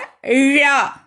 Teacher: நாவின் நுனி மேல் நோக்கி வளைத்து தொடுவதால் ழகரம் தோன்றும்